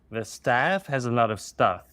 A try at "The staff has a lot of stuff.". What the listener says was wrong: Good. Do it again.